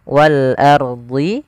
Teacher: Kemudian wal ardihi ini ada alif lam qamariah yaitu alif lam yang tertulis tapi dia dibaca huruf lamnya dengan jelas